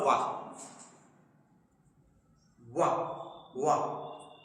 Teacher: वो दंत और ओष्ठ से बोला जाता है इसलिए वो दंतोष्ट होता है